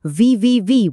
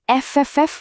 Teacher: গলায় আলতো করে আঙুল রেখে ভি ভি ভি বলুন, একটা ভাইব্রেশন ফিল করবেন। আবার এফ এফ এফ বলুন, দেখবেন কোনো ভাইব্রেশন নেই। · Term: ভয়েসিং